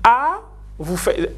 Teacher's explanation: Non, l'hiatus, c'est AI. Parce que quand vous dites A, A, c'est ce qu'on appelle une voyelle basse. Et I, c'est une voyelle haute.